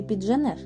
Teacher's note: слові підженеш а наступна буква ж належить до кореня цього слова злитої вимови звука Дж не буде а матиме місце збіг приголосних звуків д Та ж на межі префікса і кореня слова